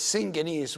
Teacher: although two gammas, also the first gamma would be an N, so it is syngenes, which means a relative or a relative to someone.